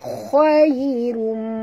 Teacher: Ya sifatnya lin lembut. Jadi walaupun tebal tetapi lembut ya.